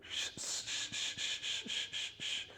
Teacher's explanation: that sound is what we call pre-palatal unvoiced fricative